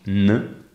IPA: n